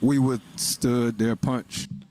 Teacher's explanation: There, rising, there, and then falling on punch. Punch, there, punch.